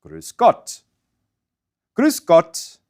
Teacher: Now, what I mean by front-tonguey is that the vowel U is pronounced with your lips in the usual rounded position, but your tongue moves forward.